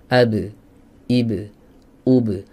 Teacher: menjauh AB IB UB Adapun suara suara harus Netral dari harakat harus steril dari harakat tidak condong ke fathah tidak condong ke kasrah tidak condong ke ke damma barulah dia dikatakan Qalqalah yang tepat